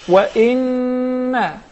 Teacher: We pronounce the ghunna along with it, because actually it was 2 noons or 2 memes.